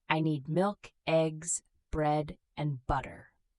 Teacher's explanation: In a list, your voice rises on each item, then falls on the last.